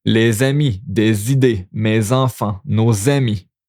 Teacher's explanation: Liaison with les, des, mes, nos, which is going to be some Z sound here